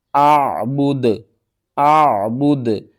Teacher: پیش ہے نا اس کو آپ نے ختم کر دینا ہے، دال کو ساکن کریں گے اور دال کے اوپر قلقلہ بھی کریں گے